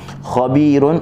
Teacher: kha buka mulut saja, pangkal lidah menaik. Khabi, bagi bawah bi kita senyum, dan ya mat selepasnya.